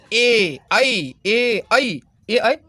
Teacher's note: ए ऐ का उच्चारण स्थान कंठ और तालु